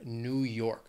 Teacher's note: Two syllables, stress is on that second syllable, that second word